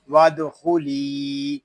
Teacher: ود، خو پیش خو، ود خو، لام یا زر لی وادخلی، یہاں لام کو ایک الف تک کھینچ کر پڑھیں گے کیونکہ یہاں یا مدہ ہو رہا ہے